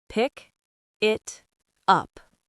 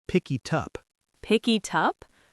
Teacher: The end K at the end of pick moved to the I in it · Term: consonant to vowel bridge